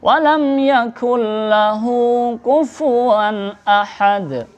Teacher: Di sini ada nun sukun ketemu huruf lam. Ini namanya idgham bila gunnah. Artinya tanpa mendengung. Jadi membaca itu secara langsung.